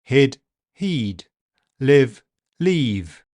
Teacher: These two were longer because they end in voiced consonant sounds, duh and vv. But they were only significantly longer on the e vowel, not the i